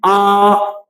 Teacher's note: बड़ा आ जब हम बोलते हैं आ, तो इसमें क्या होता है कि मुख द्वार पूरा खुलता है। और अर्धबीव्रत में जिसमें आधा मुख द्वार खुलता है वो है आ, ऐ, आओ और उआ।